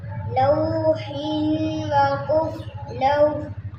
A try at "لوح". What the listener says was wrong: لوح، ہا کو بھی ادا کرنا ہے وقوف میں. لوح، زور سے.